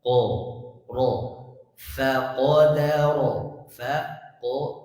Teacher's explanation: Jangan ikut fa dan dalnya huruf menjadi tebal.